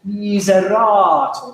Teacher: And secondly, not too marcato, not too choppy, but miserator, miserator et ius. You can aim for the third syllable. Miserator, that's the stress of the word.